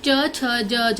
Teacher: दूसरा में होता है चवर्ग, च, छ, ज, झ, ये हम लोग तालू से बोलते हैं